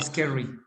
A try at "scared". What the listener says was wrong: So it's scared, not scary, scared. So no, that's scary. So it's not scary. Así que ahí la R bien. Y después ED. Scared.